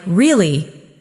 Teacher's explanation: For example, when you ask a question like, "Really?" your voice goes up slightly at the end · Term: Intonation